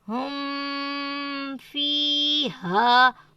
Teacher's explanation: نون کی آواز نہیں لانی، اظہار کرنا ہے